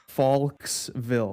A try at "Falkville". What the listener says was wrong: Nope. Falkville. That S just wants to happen.